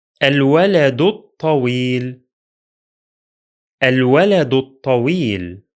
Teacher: The first Hamza is pronounced because it's at the beginning of the speech. The following lam is pronounced because it is Lunar. The second Hamza is silent because it's in the middle of the speech, and the following lam is also silent because it is solar.